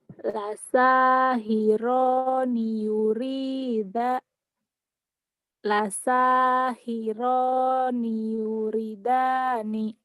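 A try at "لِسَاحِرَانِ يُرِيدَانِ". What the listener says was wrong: salah yurinya panjang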